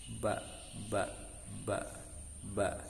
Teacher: Secara makhraj ba itu dari bainis syafatain, dari antara dua bibir. Jadi ketika kita mengucapkan ba, bibir ini harus bergerak dua-duanya.